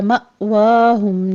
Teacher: اولئک مد متصل واجب ہے، 5 کاؤنٹ کر لیں گے۔ مأواہم میں حمزہ ساکن ہے، یہاں پر جھٹکے کے ساتھ ادائیگی کریں گے